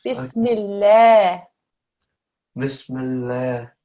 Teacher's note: this lam is a thin lam, okay, because there's a kasra before. So when you read it, smile.